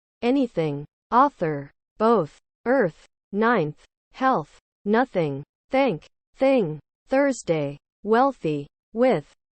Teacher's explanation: your tongue should touch the edges of your front teeth and the tip of the tongue vibrates a bit while air flows out through your tongue and upper teeth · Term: voiceless th